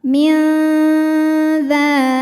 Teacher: Karena nun sukun menghadapi huruf dzal, maka bunyi nun sukun dibunyikan samar-samar, siap-siap menuju makhraj huruf dzal disertai dengung. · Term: ikhfa awsat